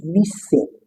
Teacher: The letter S does not result in voiced consonant, unlike husband, music.